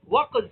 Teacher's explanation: زبان کا اس کا جو مخرج ہے، زبان کی جڑ اور اس کے مقابل اوپر کا تالو، زبان کی جڑ اس کے مقابل اوپر کے تالو پر لگ رہی ہے، لیکن زبان کا بیچ تالو سے چمٹ نہیں رہا ہے بلکہ الگ ہو رہا ہے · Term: انفتاح